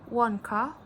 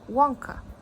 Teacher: where the stress was placed at the first syllable